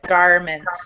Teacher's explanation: Whenever we have an R sound in the middle of words with the American or North American accent, it's usually a pretty strong R sound.